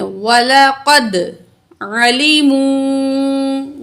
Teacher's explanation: واو مد ہے، 2 الف کے برابر کھینچیں گے